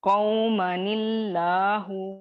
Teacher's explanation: تنوین کے نون ساکن کو حرکت دے کر لام اسم جلالہ سے ملا کر پڑھا گیا، ٹھیک ہے. قومن اللہ सॉरी, कौमनिल्लाहु, लाम इसमें जला को मोटा नहीं करेंगे क्योंकि कसरा आ रही है इसके इससे नीचे।